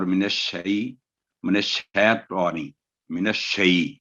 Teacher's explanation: یا جو ہے اس وقت حروف لین کا کام دے رہا ہے کیونکہ شین پر زبر ہے اور یا پر جزم ہے